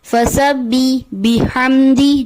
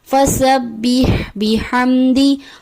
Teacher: جائے گی۔ فسبح بحمدی، یہاں پر جو کامن مسٹیک ہوتی ہے ہا کی جگہ یا کی آواز آ جاتی ہے جیسے فسبح بحمدی جو کہ درست ادائیگی نہیں، ہا کو واضح